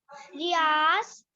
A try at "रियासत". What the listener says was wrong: रियासत, रियासत है बेटा, रियास नहीं है, दोबारा से रीड करो।